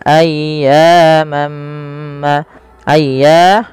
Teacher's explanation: panjangkan suara ya sepanjang dua harakat karena ia mad thabi'i dan tekan ya dulu.